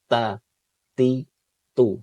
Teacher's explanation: Enggak boleh ada nafas yang mengalir ya, tapi harus biasa aja.